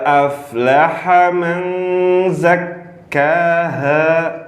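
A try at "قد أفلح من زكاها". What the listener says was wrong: Huruf ha lebih jelas. Ulangin ha tipis.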